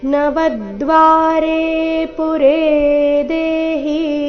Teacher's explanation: ನವದ್ವಾರೆ ಶಬ್ದದಲ್ಲಿ ವ ಮೇಲೆ ಆಘಾತ ಬರಬೇಕು